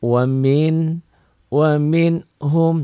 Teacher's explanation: apa adanya dibaca tanpa ditahan tanpa dengung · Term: Idhar